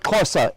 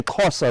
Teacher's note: the lateral click off the side of the palate, which is the X, which is the, as in the word Xhosa, X-H-O-S-A, Xhosa.